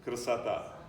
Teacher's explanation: When you speak it very fast in Russian, that first vowel disappears completely.